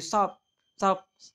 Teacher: Seakan-akan T dibentuk di palatal seperti halnya S, karena S memengaruhi bunyi T tersebut. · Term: asimilasi